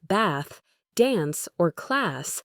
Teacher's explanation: typically pronounced with a flatter, shorter a sound, closely resembling the A in the word cat or apple